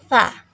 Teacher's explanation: Sa, zal, dan zo itu makharijul hurufnya adalah ujung lidah ditempelkan ke ujung dua gigi seri atas.